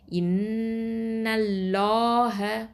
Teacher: அல்லாஹ் அப்படிங்கிற வார்த்தையில் உள்ள லாமை தான் தஃப்ஹீமா, அதாவது வல்லினமாக உச்சரிக்கணும்